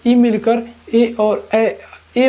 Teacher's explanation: कंठ और तालु से जो मिलकर बनता है उसे हम कंठ तालव्य कहते हैं